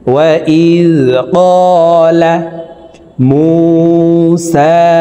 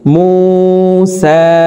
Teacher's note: وَإِذْ قَالَ مُوسَى মু এক আলিফ টান, পেশের বাম পাশে জিজমালা ওয়াও মদের হরফ, ডান দিকের হরকতকে এক আলিফ টানিয়া পড়িতে হয়। তো দুই ঠোঁট গোল করে এক আলিফ টানি পড়ব। মিম ওয়াও পেশ মু, সা সিনের উপরে খাড়া জবর, সিন খাড়া জবর সা, উপরের দিকে ধাবিত করে সিন হরফকে এক আলিফ টানি পড়ব।